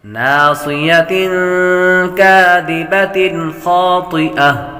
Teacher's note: ناصیۃ کاذبۃ، یہاں پر غنہ نہیں کریں گے، تنوین کے بعد خا حروف حلقی میں سے آ رہا ہے، غنہ نہیں کریں گے۔ ناصیۃ کاذبۃ خاطئہ، طا حروف مستعلیہ میں سے آپ پر کریں گے۔